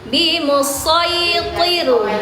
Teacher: To, walaupun dia kasroh tetap harus tebal, jadi tir, ya, bimusaytir, ya, bukan bimusaytir, tapi bimusaytir.